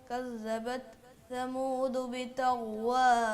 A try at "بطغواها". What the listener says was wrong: ایک رہ گئی آخری والی, طوئیں والی. طا طا طا طا بطغ. طوئیں صحیح بولی آپ نے. طا بطغواها.